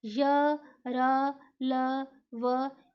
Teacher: इन व्यंजनों का उच्चारण स्वर तथा व्यंजन के मध्य का सा होता है, यानी ना तो वो पूरा स्वर होता है ना पूरा व्यंजन होता है। उच्चारण के समय जीवा मुख के किसी भी भाग को स्पर्श नहीं करती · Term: अंतस्थ व्यंजन